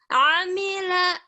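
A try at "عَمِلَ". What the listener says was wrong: Pendek. Amila, amila. Pendek ya. Jangan dipanjangin. Nanti kebiasaan manjangin bacaan yang pendek. Nggak boleh. Amila.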